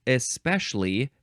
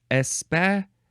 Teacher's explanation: You can say especially, 3 syllables, or especially, 4 syllables.